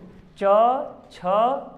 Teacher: तो चलो च वर्ग हो गया, तो च वर्ग च छ ज जब पढ़ो फटाक से, है ना। देखो च छ, तो जीभ तुम्हारा तलवे पर लग रहा है कि नहीं, मतलब तालु से बोल रहे हैं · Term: तालव्य